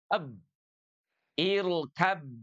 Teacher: Ada huruf ba di mana makhrajnya intibakus syafatain. Bertemunya dua huruf, dua bibir maksud saya ya.